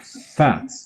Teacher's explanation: labiodental means lower lip upper teeth · it says it's a labiodental sound which is produced in a fricative manner so the first part of this labial is the lip it's